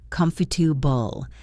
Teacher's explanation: The middle is a schwa.